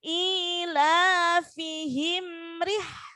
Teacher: Sekarang yang ayat kedua roknya harokatnya kasroh, jadi harus tipis ri.